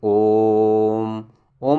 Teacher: ओम में प्लुत का प्रयोग किया जाता है